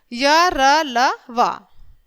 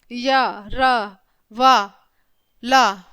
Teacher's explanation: इन व्यंजनों का उच्चारण करते समय जीभ मुंह के भीतरी भाग को मामूली सा स्पर्श करती है। इनकी स्थिति स्वर और व्यंजन के बीच की होती है, इसलिए इन्हें अंतस्थ व्यंजन कहते हैं।